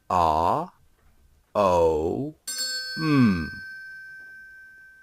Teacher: Then we have the M sound, which is made by the vibration of your throat when your lips are together